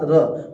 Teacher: र यानी जिभिया को रगड़ के निकल रहा है। · प्रकंपित मतलब कंपन होके निकल रहा है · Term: लुंठित